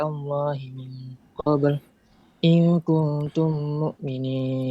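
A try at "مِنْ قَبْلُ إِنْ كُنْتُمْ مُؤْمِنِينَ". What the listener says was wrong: Ya, wakaf-wakafnya banyak salah ya, tapi ya sudah, lanjut saja. Di bacaan wakafnya tidak boleh wakaf-wakaf seperti tadi, tapi langsung lanjut saja ya.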